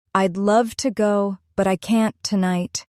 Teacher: The stressed words are love, go, and tonight. Everything else is softer.